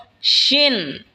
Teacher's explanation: শিন জিহ্বার মধ্যখান তার বরাবর ওপরে তালের সঙ্গে লাগা উচ্চারণ হবে শিন।